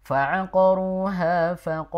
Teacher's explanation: tadi kan terbaca faqala panjang ya harusnya pendek